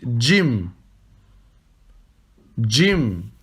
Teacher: Vous prononcez un D avant le J.